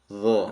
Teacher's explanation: Kalau dha ya terangkat tengah lidah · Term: isti'la